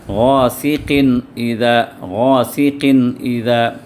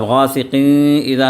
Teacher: اظہار کا مطلب وہاں پر اس نون کی آواز کو ظاہر کر دیا جائے گا۔ جیسے یہاں پر دیکھیے غاسقن اذا، غاسقن اذا، اب غاسقین اذا نہیں پڑھنا ہے، غاسقین اذا پڑھیں گے تو غلط ہو جائے گا، اخفا نہیں کرنا ہے یہاں پر، تو یہاں پر اظہار کرنا ہے۔